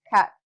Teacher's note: Englishes such as Ghanaian, West Indian, or colloquial Singaporean do not pronounce the last letter, or at least it becomes a glottal sound, or it's unreleased. So the word cat is closer to cat.